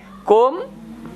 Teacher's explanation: merapatkan bibirnya tapi tidak panjang ya pendek kum ya rapatkan itu namanya izhar syafawi kalau memang sih bertemu